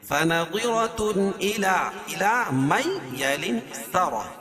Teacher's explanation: را کو پر پڑھیں گے اور گول تا کو وقف کی حالت میں ہائی ساکنہ سے بدل دیں گے